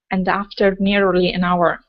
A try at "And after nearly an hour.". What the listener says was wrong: Give me a better R on nearly. Okay. Control your tongue right before the L.